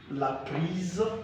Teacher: So S here is pronounced as Z.